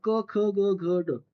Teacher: हे शब्द सगळे कंठातन निघतात क ख्याच्यामध्ये जिभेचा कुठेही स्पर्श होत नाही कंठातन शब्द शब्द येतोय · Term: कंठव्य